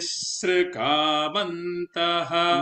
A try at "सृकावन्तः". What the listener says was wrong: No holding on sru. There should not be holding on sru. Because sru is a sru. It's not a suru. प्रचरन्ति सृकावन्तः.